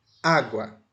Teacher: O acento escrito não existe, mas o acento falado está no A. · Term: acento prosódico